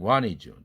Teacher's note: t가 날아가니까 모음 NT 모음으로